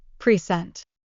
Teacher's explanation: the stress moves to the second syllable